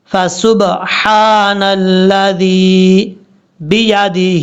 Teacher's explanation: با کے بعد جو ہا ہے، یہ ہا بریک ہے، اس کو بھاری ساؤنڈ کے ساتھ نہیں پڑھنا. فسبحان الذی بیدہ، ہا کے نیچے کھڑا دے رہا ہے، 1 الف کی مقدار اس کو لمبا کریں گے.